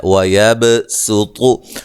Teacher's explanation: یہاں اس کو خالص سین کے ساتھ پڑھیں گے، سواد ادا نہیں کریں گے ، ٹھیک ہے، خالص سین کے ساتھ روایت حفص میں پڑھیں